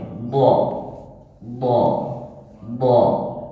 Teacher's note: bacanya d d tidak ada angin D itu tidak ada desis yang keluar